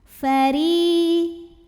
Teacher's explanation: Huruf ro dibunyikan secara tarqiq karena ro-nya berbaris kasrah, maka ro-nya dibaca dengan tipis.